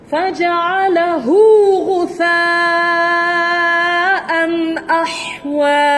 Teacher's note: Hu tu maksilah saghirah, tidak panjang.